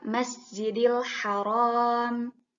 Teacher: RO nya harus dibaca panjang Karena ada Alif sukun sebelumnya fathah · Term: Mad thobii